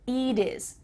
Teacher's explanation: so instead it sounds like a vowel is it is so let's change that T to a D and make sure that you cut off the H it is can you say that with me eat is eat